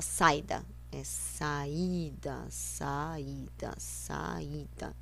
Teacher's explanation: são duas vogais pronunciada separadamente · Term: hiato